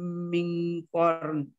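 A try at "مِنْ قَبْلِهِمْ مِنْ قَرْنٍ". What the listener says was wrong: Ya, boleh korn. Pakai en ya. Ennya enggak boleh hilang. Ya, ini qablihim mi tahan, dia idgham mi tahan dulu ya.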